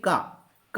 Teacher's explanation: का जो होता है वो अल्प प्राण होता है